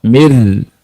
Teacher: Nunnya tidak terbaca. Langsung ke ra. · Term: Idgham bila gunnah